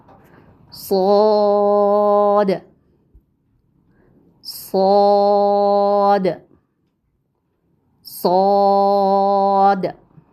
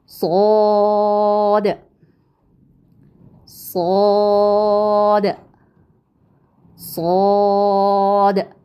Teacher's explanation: زبان کی نوک ثنائے سفلا یعنی نیچے کے دونوں دانتوں کے کناروں سے مضبوطی سے لگا کر ادا کرتے ہیں. فرق کیا ہے کہ سین باریک حرف میں سے تھا جبکہ صاد موٹا حرف ہے، اور موٹے حرف کے لیے ہم کیا کرتے ہیں آپ بتائیں گے.